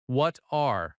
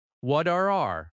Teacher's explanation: The T connects to R. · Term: linking